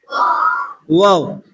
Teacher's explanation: क्या है व वोंठों को गोल करने से अदा होता है होठों को गोल करने से अदा होता है